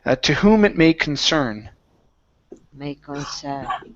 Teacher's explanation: Next up, we have the word concern. So our stress is at the very end.